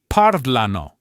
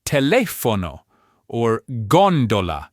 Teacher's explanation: the stress falling on the third to last syllable. And lucky for us, there are some pretty good clues to tell you when this is about to happen.